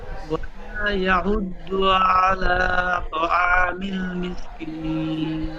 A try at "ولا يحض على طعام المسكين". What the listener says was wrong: তো এখানে আলা বলে আইনটা টান হয়ে যাচ্ছে, টান হবে না। আইনের উপর জাবার আছে, জাবারটি হারাকাত, তাড়াতাড়ি পড়তে হয়।